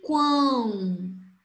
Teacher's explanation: O som saiu pelo nariz. Então, um tritongo nasal. Letra U, semivogal.